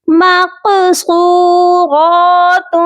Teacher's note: تا کی جو تنوین ہے یہاں پر ہم آواز کو ناک میں چھپا کر پڑھیں گے